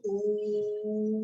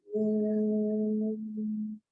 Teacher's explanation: ऊ म्हणताना आपल्या ओठाचा चंबू होणार आहे.